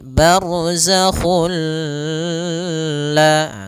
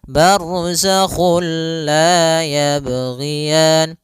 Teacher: tidak boleh disertai dengan gunnah, tidak boleh ada penahanan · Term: idgham bila gunnah